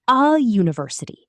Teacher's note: It starts with a Y sound, which is a consonant sound. So it's a university, not an university.